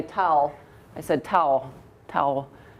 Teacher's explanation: sometimes so I didn't say t I said tow towel um the L's turns into more of a w it's vocalized more like a vowel · the final L can sound like a W sometimes so I didn't say t I said tow towel um the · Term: vocalize L's